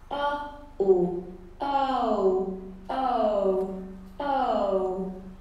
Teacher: Now this is a diphthong comprised of 2 vowel sounds put together in the same syllable. In this diphthong we have a schwa, and we need to transition to O.